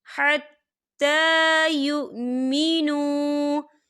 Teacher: حتیٰ کھڑی حرکات ہے، تو حرکت کے برابر کھینچیں گے